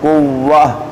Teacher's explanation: گول تا کو ہا ساکن میں بدل کر پڑھنا ہے